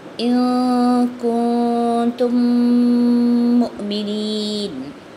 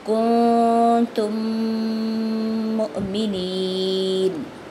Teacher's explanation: ادغام بالغنہ، ناک میں آواز کرتے ہوئے غنہ کرنا ہے، چھپاتے ہوئے ناک کی آواز کو، اور تھوڑا سا اسٹے کرتے ہوئے آگے جانا ہے